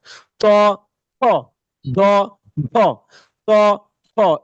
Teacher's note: উপরে দুই দাঁতের মূলের সাথে লাগিয়ে উচ্চারণটা করতে হয়। এজন্য এটা দন্ত বর্ণ।